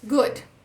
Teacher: Tá nem esticado nem arredondado.